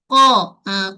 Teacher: Qa tak ada angin. Bunyi jahrun tak berangin. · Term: qaf